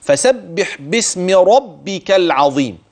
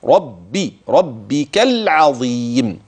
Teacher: راء ربك العظيم، يبقى الراء تفخم، ولاحظ المشدد، اوعى تخفف